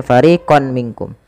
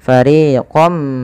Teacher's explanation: ketika kita memasukkan tanwin ini kepada huruf mim ditahan dengan gunahnya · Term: idgam bighunah